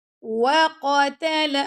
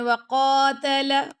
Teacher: وَقَتَلَ دَاوُودُ، وَقَتَلَ، اگر آپ پڑھیں وَقَاتَلَ، قاف لمبا ہو گیا آپ کا